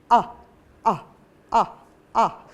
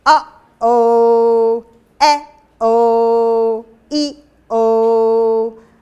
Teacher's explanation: And she came up with something called a glottal, a little pop. When you make that sound, you are in thick fold contact.